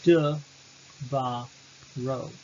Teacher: The addition of the suffix o, third masculine singular, will lengthen the word. We now have a three-syllable word, de, va, ro. Ro is now the tonic syllable. The pretonic is va, and the propretonic is de.